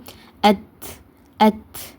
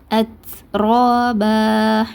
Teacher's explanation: இத்து மட்டும் சொல்லாமல் இத்து கூட சேர்ந்து காற்றையும் வெளிப்படுத்தி உச்சரிங்க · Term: ஹம்ஸோடைய தன்மையை